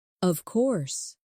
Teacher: When they are certain, their voice goes down strongly